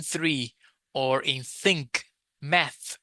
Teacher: You also you don't have a vibration when you say three three. No vibration. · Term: voiceless